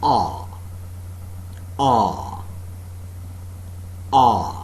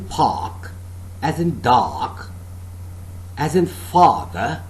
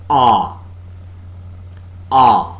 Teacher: A part of the tongue between the center and the back is in the fully open position, no contact being made between the rims of the tongue and the upper molars. The jaws are considerably separated and the lips are neutrally open.